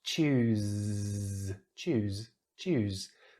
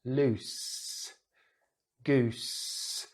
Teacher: The only difference is vibration, what we call voiced sounds. So the Z here, we use our voice box to create some vibration to make the Z sound, the Z sound.